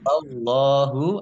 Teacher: Q lam tanda waakaf boleh terus tetapi berhenti lebih baik Allahu Allahnya dibaca tebal karena harakat di depannya fathah